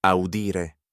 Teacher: The fourth conjugation infinitive ends in a long I.